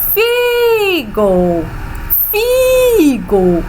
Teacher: Então, o FI, o I é pronunciado com mais intensidade. Então, bota um monte de izinho.